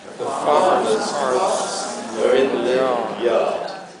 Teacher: this is where R is only pronounced before a vowel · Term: non-rhotic